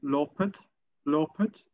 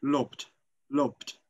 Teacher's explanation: in Standard Albanian it would be lopet, lopet, but in Geg Albanian it would be lopt, lopt. So it is just dropped.